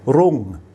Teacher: you've got the raw, the R consonant, but then you see you've got the very short U vowel and then the NG final consonant